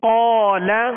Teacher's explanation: قاف کے ساتھ الف بھی پر ہو گیا، قاف کو بھی پر پڑھیں گے حروف مستعلیہ میں سے.